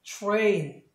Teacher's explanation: T 다음에 R이 있으니까 구개음. 그래서 이 T를 치로 발음하시면 되겠습니다. 그래서 train 이렇게 발음하시면 되겠습니다.